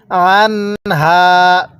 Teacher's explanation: আইনটা উচ্চারণের সময় গলার মধ্যে হালকা চাপ দিয়ে পড়লে আইনটা সহি শুদ্ধ উচ্চারণ হয়